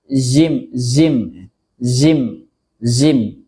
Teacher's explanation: Di sini ada beberapa kesalahan dalam mengucapkan huruf jim. Yang pertama mengucapkannya dengan desis yang ringan.